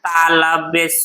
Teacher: इस स को तालव्य स क्यों कहते हैं, क्योंकि इसका उच्चारण कहाँ से होता है, तालु से होता है